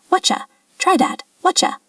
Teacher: What you doing? The t and the y sound together can create a ch sound